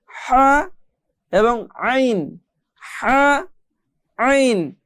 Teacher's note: এই দুইটি হরফ আমাদেরকে গলার মধ্যে চাপ দিয়ে পড়তে হবে